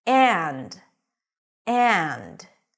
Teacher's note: When this word is emphasized, then the d comes back with all its presence and the schwa goes back to the pure vowel which is the a sound.